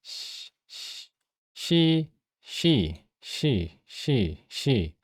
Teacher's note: 무성, 잇몸, 단단 입천장, 마찰음이고 이거를 한자어로 다시 읽으면 무성, 치경, 구개, 마찰음입니다.